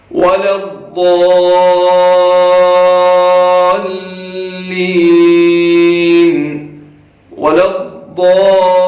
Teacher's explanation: ضاد کو سختی کے ساتھ پڑھنا ہے اور اسے کھینچنا ہے، لمبا کرنا ہے، کیونکہ یہاں پہ مد آ رہی ہے. اس کو کم سے کم آپ 5 الف کے برابر یا 5 حرکتوں کے برابر کھینچ کر کے پڑھیں گے.